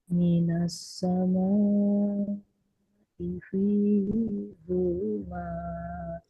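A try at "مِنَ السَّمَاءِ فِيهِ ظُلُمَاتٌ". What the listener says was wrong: Hi-nya nggak panjang. Minas sama'i fihi zulumat.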